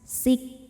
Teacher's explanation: Untuk kaf yang sukun maka anginnya keluarnya terakhir setelah keluar bunyi. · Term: hams